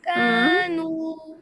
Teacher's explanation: دیکھیں نو ناک میں آواز آ رہی ہے. نو ایسا لگ رہا ہے جیسے لاسٹ میں نون گنا پیدا ہو گیا، جبکہ نو نو ناک سے نہیں، ناک سے باہر رکھیں